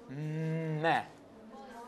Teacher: Meh is produced by complete closure of the lips. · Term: bilabial, nasal